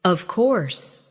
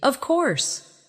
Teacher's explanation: When they are certain, their voice goes down strongly. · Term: intonation